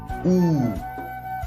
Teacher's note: U, pronounced as a prolonged Oo with the vibration.